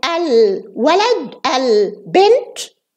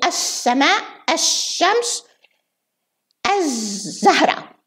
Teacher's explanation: We pronounce it al, like al-walad, al-bint, before certain consonants, and we delete the al before other consonants. Like we say as-sama, as-shams, as-zahra.